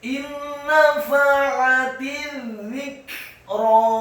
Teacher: Kata az-dzikra, za-nya ditasydidkan tipis, lidahnya agak keluar sedikit, kasrah satu harokat, kafnya dibaca sukun dan ada pantulan tipis. Ingat, bukan qalqalah, tetapi pantulan tipis.